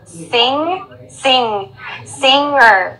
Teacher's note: Now this is like a nasal sound, and your tongue is like in the back of your throat